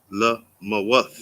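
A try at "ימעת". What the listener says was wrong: No, there's no la. What is the first letter?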